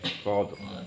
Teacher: Ro-nya itu tidak boleh bergetar kelebihan atau tidak ada getaran.